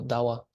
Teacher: if the bha is in the second syllable, it becomes wa